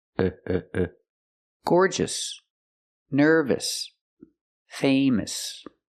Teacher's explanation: have a lot of adjectives with O U S at the end and they're all pronounced the same with a short sound uh